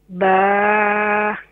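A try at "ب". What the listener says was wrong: Ba ko ek alif miqdar khinche zyada na khinche.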